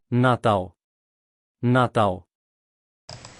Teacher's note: in the Brazilian Portuguese they're going to pronounce that L at the end slightly different so it's going to be more of a w at the end rather than an L